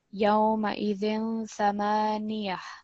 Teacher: just remember with this ta, it becomes a ha when we stop.